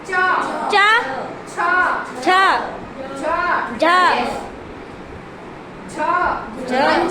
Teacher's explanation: આપણી જીભ તાળવાને અડીને આ વર્ણ બોલે છે એટલા માટે એને કહેવાય તાલવ્ય.